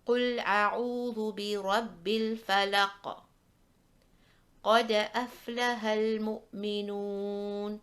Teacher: the medium echo, where we are stopping on a Qalqalah letter without a shadda, so it will have a temporary sukoon.